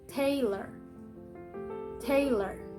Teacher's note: the stressed syllable is tay, and the unstressed syllable is ler.